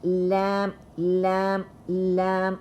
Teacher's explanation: When you pronounce lam, you will feel like your tongue, the edges of your tongue are touching up your upper jaws, and the tip of your tongue is also moving